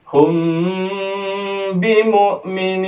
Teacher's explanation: Oke, dalam praktik membacanya kita akan muwakofkan bacaan kita di nun, maka nunnya menjadi berlafaz nun sukun ya, atau nun sukun alibri. Perhatikan di bacaan mimnya didengungkan 2 harokat. · Cara membaca ikhfa syafawi ini adalah ketika mim sukun berjumpa dengan ba. Kemudian mimnya harus dibaca dengung sebanyak 2 harokat.